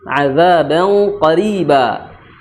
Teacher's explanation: Ikhfanya tebal karena huruf qaf adalah huruf yang memiliki sifat isti'la, maka bunyi ikhfanya tebal. Adzaban qa, bukan adzaban qa, tapi adzaban qariba. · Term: ikhfa tebal